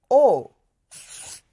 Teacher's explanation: o is made in the front of the mouth